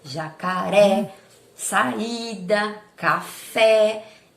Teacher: a sílaba acentuada é a sílaba tônica é a sílaba mais forte e acentuada com o acento agudo me traz uma pronúncia aberta